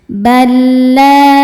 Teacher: La hukumnya mad tabi'i dhahiri sebab ada alif yang didahului baris fathah. Cara bacanya panjang 2 harokat. Balayu. Yu mad tabi'i dhahiri karena ada waw sukun sebelumnya dhammah. · Bal ada hukum idgham bila gunnah karena ada lam sukun bertemu dengan lam yang berharokat. Cara bacanya lam dimasukkan ke lam kedua, ya lam yang sukun tidak ditahan karena dua-duanya gak punya dengung.